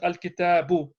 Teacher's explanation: the tanween drops, because tanween and alif lam can't go together. So it becomes al-kitabu.